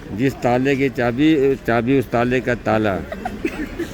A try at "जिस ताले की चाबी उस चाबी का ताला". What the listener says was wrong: ताले का ताला। ताले का ताला नहीं, जिस चाबी का ताला।